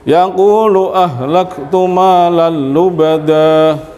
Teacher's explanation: ini tanwin bertemu lam itu bila gunnah tanpa dengung